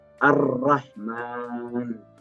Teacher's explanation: lamnya langsung hilang langsung digantikan huruf selanjutnya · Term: Idgham Syamsiah